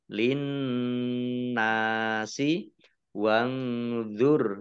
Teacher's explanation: nun sukun bertemu dengan huruf dha bacaan ikhfa dibaca samar-samar